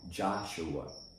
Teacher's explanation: the first syllable in the word Joshua is strong